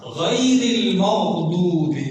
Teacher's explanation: ادنا کا مطلب ہوتا ہے قریب، جو منہ کے قریب ترین حصہ ہے وہاں ہم نے غین اور خا کو پڑھنا ہے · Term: ادنائے حلق